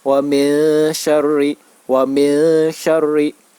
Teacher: Shin merupakan salah satu huruf ikhfa. Maka nun sukun bertemu dengan huruf shin wajib dibaca samar.